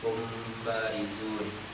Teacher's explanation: Hurufnya hanya satu, yaitu ba. Jika terdapat huruf ba setelah mim mati dan keduanya itu berbeda kalimat, maka huruf mim tersamarkan dengan cara dibaca guna. Ini disebut ikhfa syafawi. · Disebut ikhfa karena tersamarkannya huruf yang mati pada huruf ba.